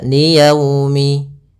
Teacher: dia kita namakan dengan bacaan Lin dalam pelafalannya harus lembut liyaumi agar menyempurnakan makhraj huruf wau kita agak monyongkan bibir kita